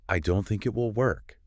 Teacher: Your voice dropped lower in tone.